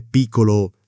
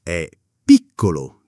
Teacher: Grande non è grande, è grande, con la D marcata. Piccolo non è piccolo, è piccolo, 2 C che si sentono.